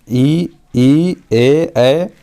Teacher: अब इसे हम अग्र स्वर क्यों कहते हैं इसको जानने का प्रयास करेंगे। तो जीभ के आगे वाला भाग से स्वर का उच्चारण करते हैं उसे अग्र स्वर कहते हैं